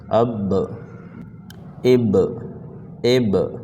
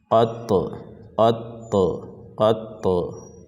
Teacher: اب، اب، اب، با کا ساؤنڈ آ رہا ہے، اب، آخر میں ایک آواز ٹکر کھا کر الگ ہو رہا ہے، اسی کو ہم لوگ کہتے ہیں قلقلہ۔